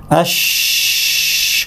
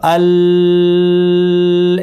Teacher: আর যখন এই হরফগুলো সিন শিন ফা উচ্চারণ করব, তখন ভোকাল কর্ডসটা জাস্ট খোলা থাকবে। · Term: হামস